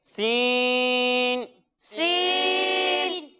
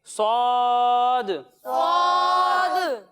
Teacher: जब हम सीन की अदायगी करेंगे तो इसमें सीटी की आवाज आएगी लेकिन इसे हम बारीक पढ़ेंगे, और जब हम स्वाद की अदायगी करेंगे तो इसमें भी सीटी की आवाज आएगी लेकिन इसे हम मोटा कर कर पढ़ेंगे क्योंकि ये हुरूफे मुस्तालिया में से है।